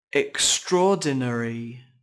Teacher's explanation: âm tiết thứ hai bắt đầu bằng ba phụ âm liên tiếp nhau và được stress · có 5 âm tiết trọng âm rơi vào âm tiết thứ hai các bạn nhé âm Tiết đầu tiên có chấm ngắn và kết thúc bằng